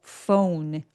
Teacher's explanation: phone 하고 어우까지 입술을 열심히 내밀어 주세요